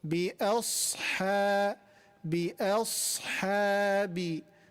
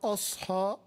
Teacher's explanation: A here is light, but صاد, صاد is heavy, and ha is light. So بأصحاب بأصحاب not a, not أصحى, no.